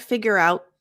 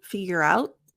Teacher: It's not figure out. My tongue goes into the T position, figure out, but there's no air.